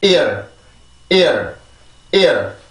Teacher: R 발음을 할 때는 입술이 이렇게 나오지 않고 그냥 그 평범한 입술 모양을 유지합니다. · I 발음을 하는 순간에 성대에 긴장을 팍 줘서 공기를 막고 그 다음에 성대를 열면서 이라고 하는 발음으로 넘어가 주는데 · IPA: iər